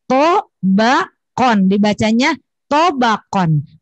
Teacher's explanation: tobakonnya jangan ditekan, tobakon, karena tidak ada tasydid